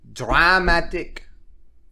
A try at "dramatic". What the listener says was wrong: It's A or A, not draw. You're going ah. It's A.